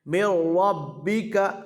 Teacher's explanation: میم کو را سے ملائیں گے، نون ساکن کو نہیں پڑھیں گے، یعنی میم را زیر مر پڑھیں گے، میم نون زیر من نہیں پڑھیں گے۔ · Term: ادغام بلا گنہ